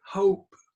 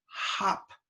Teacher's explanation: the long is the moving oh